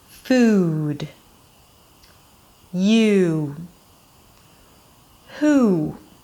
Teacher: You hear the tongue actually going up, creating that ooh sound? All right, that's what you want to look for when you make this sound.